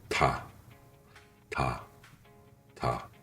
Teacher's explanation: Tigueut se prononce entre D et T, léger sans souffle et sans tension. La langue touche juste derrière les incisives supérieures et se relâche doucement. · La langue touche juste derrière les incisives supérieures et se relâche doucement. En début de mot, il sonne plutôt comme un D léger.